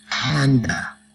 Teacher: It's like a puff of air. Lips together, and let the sound come out from your mouth like this. Not a voice sound, but a soft sound produced by the lips.